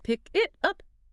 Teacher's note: pause between each word, placing a hard stop after the K in pick and the T in it. And if you physically do that right now, like if you, the listener, literally just say, pick it up, you will feel how robotic and staccato it is.